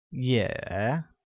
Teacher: pronounced with the falling rising tone